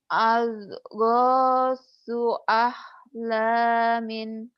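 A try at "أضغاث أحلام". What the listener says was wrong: Adghasu dodnya kurang bulet ya. Ad. Adghasu tapi jangan ada e-nya ya. Adghasu.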